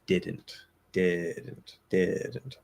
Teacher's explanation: we're obviously removing the vowel from not and so the stress transfers to the did